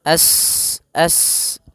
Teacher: sifat mengalirnya nafas atau berdesis seperti suara burung